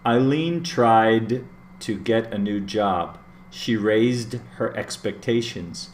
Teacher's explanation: all of the eds sound like a D, like a D sound.